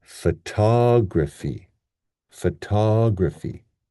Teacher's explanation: So what we end up getting is now the first syllable becomes f, and the stress here is on the tog